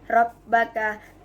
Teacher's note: Terdapat dua huruf ba yang bertemu, yang pertama sukun, yang kedua berfathah. Cara bacanya, huruf ba pertama dilebur ke huruf ba kedua menjadi Rabbaka. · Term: idgham mutamatsilin